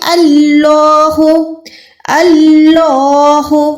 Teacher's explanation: لام کھڑی زبر لا کو 1 سیکنڈ کھینچیں گے، منہ کو گولائی کر کے اللہ کا نام پر ادا کریں گے